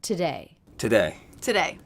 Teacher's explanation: Always the first syllable is reduced to the schwa sound, but I'm noticing that these T's are all true T's and not flap T's. That's because they're beginning sentences. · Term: true T sound